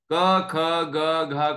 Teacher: क ख ग घ का उच्चारण आप बिना कंठ से हवा गुजरे कर ही नहीं सकते